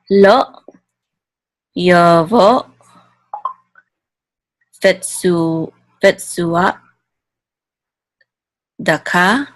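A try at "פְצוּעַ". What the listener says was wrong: The ayin, you need it deeper. It's not the same as aleph. It's in the same area in your throat, but it's not the same thing. With aleph, you're stopping the glottal flow of air. You know, you're closing your glottal stop.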